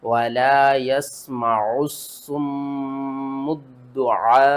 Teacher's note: تین مشدد لیٹر اکٹھے آ رہے ہیں، تو یہاں پر ہم نے 2 مرتبہ سواد کو پڑھنا ہے، 2 مرتبہ میم کو پڑھنا ہے، 2 مرتبہ دال کو پڑھنا ہے